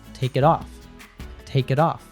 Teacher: the T sound at the end of it stands between vowels. In this position, the T turns into a soft D.